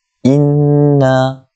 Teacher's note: Inna, kita tengok pada huruf nun itu ada padanya tanda nun musyaddadah, nun yang bertanda sabdu, maka kita kena dengung 2 harakat. Inna wajibul ghunnah dekat situ.